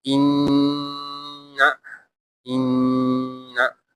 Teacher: It is a nasal sound, a humming sound from the nose. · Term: ghunna